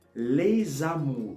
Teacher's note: so that s it has the sound of a z